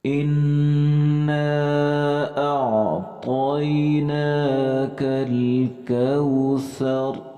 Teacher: اس کے بعد حمزے کو ہم نے عین کے ساتھ لگانا ہے، اور یہاں پہ بہت سارے لوگ غلطی کرتے ہیں، اسے بولتے ہیں، یعنی حمزے کو حمزے کے ساتھ جیسے ٹکراتے ہیں تو کی آواز آتی ہے، تو اس طرح نہیں پڑھنا، بلکہ عین جو ہے یہ حلق سے ادا ہوتا ہے